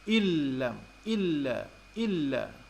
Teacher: Bunyi nun dimasukkan ke dalam bunyi lam. Dan idgham di sini ialah idgham bila gunnah. Idgham yang tidak disusuli dengan dengung. Bunyi nun masuk terus kepada alif, masuk ke nun terus masuk ke dalam bunyi lam.